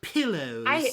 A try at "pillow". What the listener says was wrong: There's pillow. There's pillow and there's pillow. You always say pillow. You say it like hello. Hello.